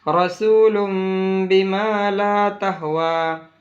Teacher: دو پیش کی تنوین ہے، اس کو ہم میم سے بدل رہے ہیں اور اس کو پڑھنے میں اخفا اور غنہ بھی ہوگا